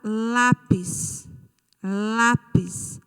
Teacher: A sílaba tônica é o lá.